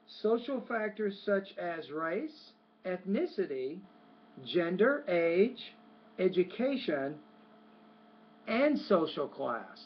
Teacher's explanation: when you get to social class, that's the end of those items in a series that you were saying, so the tone or pitch should fall on the last item.